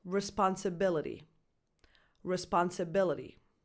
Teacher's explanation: The primary stress is on that B-I, B syllable, responsibility.